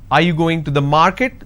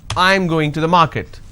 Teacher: going to the is flat are you going to the market this is going up because the last word denotes like it's a question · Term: rising tone